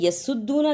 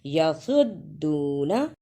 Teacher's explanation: صاد کی جگہ پہ سین کی آواز نہیں آنی چاہیے، صاد کو موٹا پڑھنا ہے